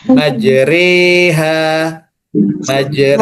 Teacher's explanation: Majre, re ini nanti salah satu ro yang tarqiq tipis